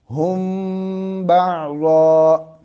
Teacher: اگر با ہوگا تو وہاں پہ ہم نے ناک میں لے کے جانا ہے